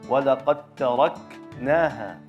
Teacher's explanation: Kaf salah satu huruf hams, ya. Kaf sukun harus jelas hamsnya